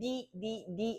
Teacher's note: 혀 끝이 어디에 닿아요? 앞니 뒤에 있는 단단한 잇몸 쪽에 닿잖아. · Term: 잇몸 소리